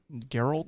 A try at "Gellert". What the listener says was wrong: Geller, but it's double L. Gellert.